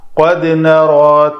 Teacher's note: جب بھی یہ ساکن آئے تو اس کو قلقلہ کرتے ہیں، تو یہ دال چونکہ پتلے حروف میں سے ہے تو یہ اس کا قلقلہ بھی پتلا ہوگا۔